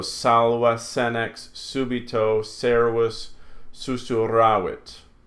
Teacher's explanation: S is always the soft S. It's never a Z sound.